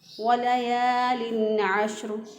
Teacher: واو کو پھر ہونٹوں کو گول کرتے ہوئے ہم نے ادا کیا۔ ولیال، یا زبر الف، یا ایک الف کے برابر اس کو لمبا کریں گے۔